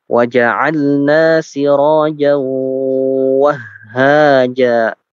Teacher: Ya, di situ ada tanwin fathah masuk ke huruf waw. Jadi dibacanya ditahan 2 harokat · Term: idgham bi gunnah